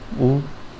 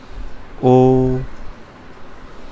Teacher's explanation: ओठ है ना गोलाकार बन रहे हैं, तो वो व्रतमुखी कहलाते हैं · बोलते समय ओष्ठ गोलाकार होते हैं